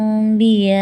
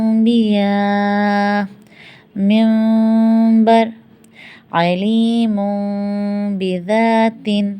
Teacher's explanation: اگر ہم بالکل ملا دیں گے تو میم بن جائے گا، نہ پورا میم بنانا ہے نہ پورا نون بنانا ہے، میم اور نون کے بیچ کی جگہ بنانی ہے ، انبیاء، بے کو ویسے ہی پڑھیں گے جیسا ہے نون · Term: اقلاب